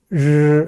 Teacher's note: 근데 마지막에 르 할 때는요. 혀가 펴지지 않고 그 자리에서 약간 바르르 떨리는 듯한 그런 느낌으로 발음이 됩니다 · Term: 권설음